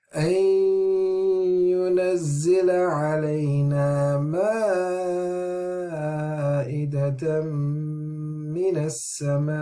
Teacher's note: So when we have a hamza, this is stopping. The kasra is dropping, and we're saying it's a sakin, even though it's still written.